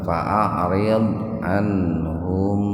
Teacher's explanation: Mim sukun bertemu dengan ha. Jadi mimnya betul-betul dibaca jelas di bibir. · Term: syafawi